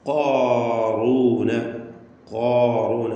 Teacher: ഖാഫ് ഖുവ്വത്തിൻ്റെ സിഫത്തുകളുള്ള കടുപ്പമുള്ള ഒരക്ഷരമാണ്. ഖാഫ് നാവിൻ്റെ അങ്ങേ അറ്റം ആണ് ഖാഫിൻ്റെ മഖ്റജ്, അഖ്സൽ ലിസാൻ. ഖാറൂന, ഖാറൂന അത് കാഫിലേക്ക് അടുത്ത് പോകരുത്.